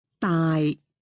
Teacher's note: Low flat tone means large.